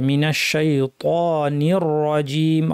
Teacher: জিহ্বার মাঝখান থেকে উচ্চারণ করতে হবে আওয়াজটা অনেকটা ছড়িয়ে পড়বে শাই ত ভারী করে বলতে হবে জিহ্বা দিয়ে আওয়াজকে উপরের দিকে ঠেলে মিনাশ শাইতানির রাজিম র বলার সময় র কে ভারী রাখতে হবে